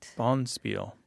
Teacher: Accent on the first syllable.